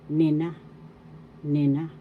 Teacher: The accent is in the second syllable, nina, nina.